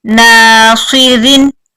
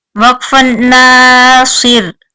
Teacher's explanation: یہ را جو ہے اس کے نیچے دو زیریں ہیں، اس لیے یہ باریک پڑی جائے گی وقف اور وصل دونوں میں، کیونکہ را کے پچھلے حرف کے نیچے بھی زیر ہے.